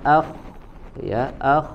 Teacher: pangkal lidahnya naik suaranya diangkat ke langit-langit maka ya keluarlah suara yang menebal atau gemak as huruf Shad